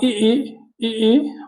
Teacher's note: जीभ का आगे वाला भाग काम करता है उन्हें अग्र स्वर कहते हैं